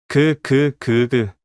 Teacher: 혀 뒤쪽이 목구멍을 막죠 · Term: 기억